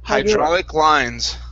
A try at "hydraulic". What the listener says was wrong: Okay, instead of hydro, it's hydra.